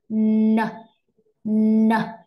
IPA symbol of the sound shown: n